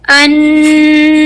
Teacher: तो ये जो अन है ये है अकमल गुन्ना की वजह से, और ये जो अलिफ की आवाज को मैंने 4 काउंट्स खींचा ये है मद आरिद लिस्सुकून की वजह से